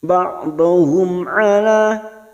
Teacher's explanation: Mim sukun bertemu ain. Mim sukun bertemu ain idhar safawi, kita baca jelas tanpa mendengung